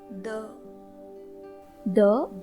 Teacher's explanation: इस वर्ण का उच्चारण करते वक्त हमें ध्यान रखना है कि हमारी जीवा आगे के दोनों दांतों को पूर्ण रूप से स्पर्श करनी चाहिए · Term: स्पृष्ट प्रयत्न